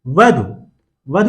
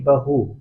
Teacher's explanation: व ध्वनि ब में और ध चूंकि महाप्राण है तो यह है में परिवर्तित हो जाएगी